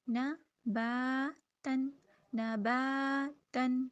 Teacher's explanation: با کے اوپر زبر ہے اور ساتھ خالی الف ہے، تو اس کو ہم الف مدہ 2 حرکت ادا کریں گے ، نون کو 1 حرکت، نا با تن، نباتن، ٹھیک ہے،